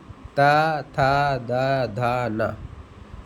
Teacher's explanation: जो जीभ है आपके दांतों को टच कर रही है इसलिए क्या हो गया दंत